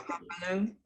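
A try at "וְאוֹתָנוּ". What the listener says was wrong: I'm not hearing the second syllable. Maybe it's me. What's the aleph and this vowel?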